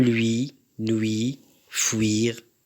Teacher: Regardez cette semi-consonne fricative bilabiale sonore. Son orthographe utilise toujours la voyelle U.